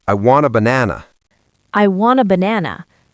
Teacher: When a native speaker says, I want a banana, they go very fast over the schwas.